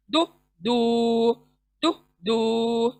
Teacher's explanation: Next unique letter दौद, दौद जबान का किनारे से मसूड़ों को लगाकर अदा करेंगे, दु दू। जबान साइड को जाएंगी, देखें आप अदा करके देखें, जबान दाढ़ों को ऊपर के मसूड़ों को टच होंगी, तब जाकर ये हुर्फ अदा होगा, दु दू दु दू।